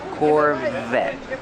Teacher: t is a stop T the E is silent Corvette Corvette pronounce a V with voice